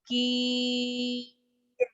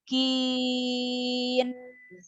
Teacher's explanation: Jangan masuk ke rongga hidung. Nunnya berikan sifat tawassut. Kin. Jadi terakhirnya gitu Bu, dikit ya.